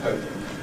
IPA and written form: ˈhəʊpɪŋ (hoping)